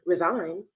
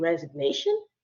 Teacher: the G in resign you can't hear it but the G in resignation you can hear that